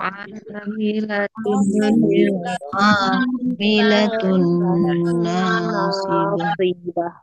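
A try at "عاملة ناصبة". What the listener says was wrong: Pertama dimulai dengan huruf ain, bukan hamzah. Ya, jadi jangan dibiasain. Em, jangan dibiasain disamain antara huruf hamzah dengan huruf ain, tapi beda. A, I, U, A.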